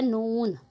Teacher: ज़ुबान का किनारा और अनियाब से सनाया तक के दांतों की जड़ों से अदा होता है